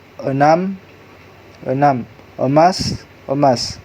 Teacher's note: Vokal e merupakan vokal tengah, sedang, dan tidak bundar.